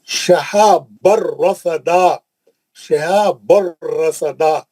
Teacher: नून को गायब कर दिया, बगैर गुन्ने के पढ़े। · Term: इदगाम बिला गुन्ने